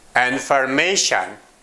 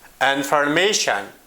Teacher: Information. Here, may is the stressed syllable.